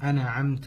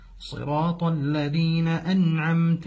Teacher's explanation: في حرف النون في انعمت فيقول انعمت او ضم التاء انعمت والصحيح ان النون بغير قلقله والتاء بالفتحه